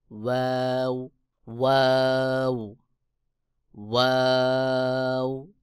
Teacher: দুই ঠোঁট গোল করে ওয়াও উচ্চারণ হবে। দুই ঠোঁট যখন গোল হবে তখন মাঝে ফাঁকা থাকবে, দুই ঠোঁটের মাঝে ফাঁকা থাকবে, বাহিরের দিকে হালকা বাতাস বের হবে